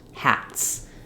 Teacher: because the T in hat is voiceless. So when we add an S to it, we just keep the voice off. It would be too hard to do hats and put the Z on.